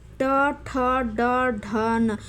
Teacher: जैसे ट, ठ, ड, ढ पढ़िएगा ना तो आपको महसूस होगा हमारा जीभ मुड़ जाता है पढ़ते समय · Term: मूर्धा